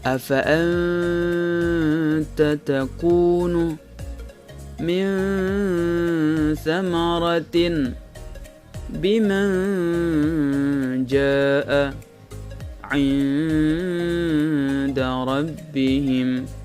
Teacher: maka cara membacanya adalah samar-samar disertai dengan dengung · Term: ikhfa